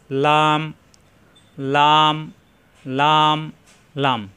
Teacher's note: লাম জিহ্বার আগার কিনারা উপরের দাঁতের গড়ায় লাগবে